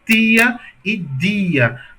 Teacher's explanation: Perceba que quando aqui em Maceió a gente fala tia e dia, a ponta da língua vai em direção ao dente, né? Por isso que ele fala dia e tia.